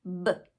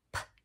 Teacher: So we have p, and the voiced pair is b. Those are formed in the same place in the mouth. It's just one has our voice box on and one has it off. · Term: voiced, unvoiced pairs